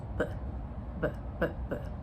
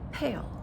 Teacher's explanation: There is a voiceless counterpart which is the P p the P sound